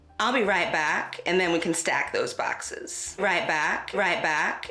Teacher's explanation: bat retraction or the a vowel being pronounced further back in the mouth